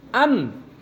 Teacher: दोनों होठों के सूखे हिस्से से मीम अदा होता है। मीम अदा करते वक्त हम एकदम भी वो नहीं करेंगे, सिर्फ सूखे होठों को मिलाओ। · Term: मीम का मखरज